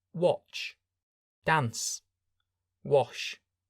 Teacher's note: you will notice a vibration when you say the vowel, but not at the end. When these words end in ed, we make a T sound. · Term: unvoiced sounds